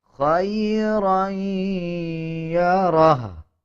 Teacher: جب وقف کریں گے تو ہا کے اوپر جو الٹا پیش ہے اس کو سائلنٹ کر دیا جائے گا اور ہا کی آواز کو آدھا پڑھا جائے گا